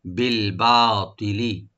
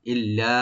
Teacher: ইল্লা, ইল্লা তবে অবশ্যই, ইল্লা মানে তবে অবশ্যই, ইল্লা এখানে লাম কাট ডাবল করে এখানে ৩ আলিফ টানবো আমরা। ইল্লা লামের গুণনা হবে না, শুধু টান হবে ৩ আলিফ।